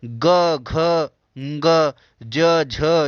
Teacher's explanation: जिन व्यंजनों के उच्चारण में स्वर तंत्रिकाएं झंझकृत होते हैं उनको हम लोग घोष कहते हैं